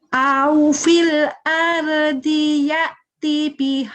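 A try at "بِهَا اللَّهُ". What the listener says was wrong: Ini jadi pendek kan ketemu tasdid. Bihaullah. Kalau ketemu tasdid dan sukun itu jadi pendek. Au fil ardi ya'ti bihaullah.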